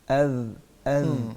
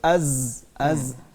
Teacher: زال میں سیٹی کی آواز نہیں ہوتی